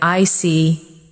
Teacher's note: When you show understanding with, "I see." your tone drops slightly to show calmness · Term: Intonation